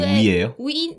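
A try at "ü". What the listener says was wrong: 위가 아니고 입 모양은 O로 하는데 우를 발음해요. 입 모양은 O 상태에서 우를 발음하면 의.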